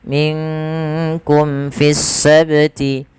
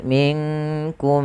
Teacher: Kemudian pada lafal mim mati bertemu dengan fa, di sini ada bacaan yaitu izhar syafawi. Maka ketika kita membaca izhar syafawi, suara mimnya harus dijelaskan, tidak boleh ditahan.